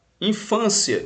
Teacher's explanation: é uma paroxítona ou seja a penúltima sílaba mais forte e ela termina em ditongo crescente